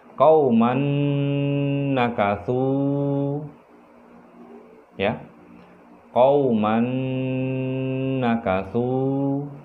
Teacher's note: Dan supaya ciri dari idgham bi gunnah itu lebih keluar, lebih nyata, maka dia seperti yang saya sudah jelaskan, harus ada dengungan, harus ada penahanan atau sengau di situ sebanyak 2 harakat atau 2 ketukan